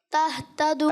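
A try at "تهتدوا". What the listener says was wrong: اچھا تہ ہا کی نہیں، تہتدو، یعنی ہا اور ہا کا آپ نے فرق رکھنا ہے، ٹھیک ہے؟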